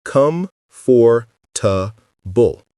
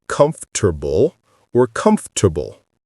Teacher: The or sound disappears completely. The middle gets compressed.